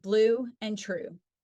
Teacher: The U is produced with the tongue position high and back in the mouth with rounded lips